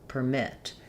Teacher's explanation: in permit, mitt is nice and long and clear and per is going to be very short.